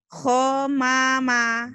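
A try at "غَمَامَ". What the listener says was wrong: Go, jangan ho. Go Kalau kho yang ini yang atas. Kho. As-salatu khairum minan naum. Kho yang ini. Ini go mama ya.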